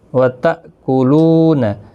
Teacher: تا حمزہ ساکن کو جھٹکے کے ساتھ پڑھنا ہے